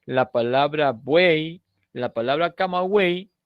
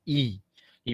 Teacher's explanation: la y no está fonando como consonante está fonando como vocal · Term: triptongo